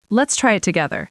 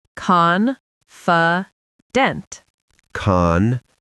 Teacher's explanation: The last syllable is very light, almost like dunt.